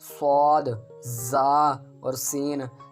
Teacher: زبان کی نوک اور دونوں دانتوں کے اندرونی کنارے سے ادا ہوتے ہیں، یعنی کہ زبان کی نوک ہوگی اور دونوں دانتوں کے، جو ہمارے درمیان والے 2 دانت ہیں، ان کے اندرونی کنارے سے ادا ہوتا ہے۔ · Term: حروف صفیریہ